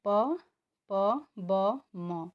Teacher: तो इनका जब हम उच्चारण कर रहे हैं तो हमारे मुख से सांस कम मात्रा में निकल रही है। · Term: अल्पप्राण